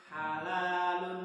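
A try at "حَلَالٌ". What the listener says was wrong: Masih naik ke atas sedikit. Nah, itu masih kotor. Jadi pokoknya keluarnya di sini.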